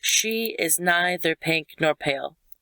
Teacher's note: stressed unstressed stressed unstressed stressed unstressed stressed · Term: trochaic, Trochaic